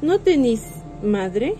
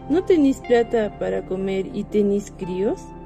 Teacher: Como otro punto sobre el voceo y muy importante, nos dice que en esta la variedad popular tiene tendencia a cambiar las vocales media anterior con grafía E a una articulación alta anterior con la grafía I